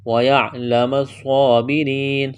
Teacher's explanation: وَيَعْلَمَ الصَّابِرِينَ صاد کو موٹا کرنا ہے، صاد میں سیٹی کی آواز پیدا کریں گے، کڑا زبر ہے، ایک الف کے برابر کھینچنا ہے، را کو باریک کریں گے، یا مدہ ہے، ایک الف کے برابر کھینچنا ہے، وقف کریں گے، نون کو ساکن کریں گے۔